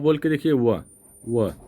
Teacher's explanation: तो देखिए व बोल के देखिए, व दंत दंत से भी आ रहा है और ओष्ठ से, ऊपरी दांतों और निचले ओठ की स्पर्श से हो रहा है, ठीक ना। ओ ओ ओ, जीभ देखिए, ओ व ऊपर दांत और नीचे वाला ओठ, व तो ये हो जाएगा दंतोष्ठ, ठीक ना।